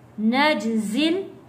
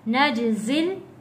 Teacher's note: جیم حروف کلکلہ ہے، آواز واپس پلٹ کر آئے گی